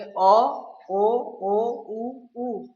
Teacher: इन स्वरों को बोलने में हमारे जो होठ है वो वृत्त यानी कि गोल हो जाते हैं। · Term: वृत्त मुखी